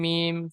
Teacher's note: দুই ঠোঁট শুকনো অংশ মিলিত হয়ে উচ্চারিত হয় মিম